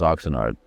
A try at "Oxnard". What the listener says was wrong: I thought Oxnard was only two syllables, but you made it